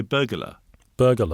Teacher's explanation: so there's like an invisible missing vowel in the middle of it.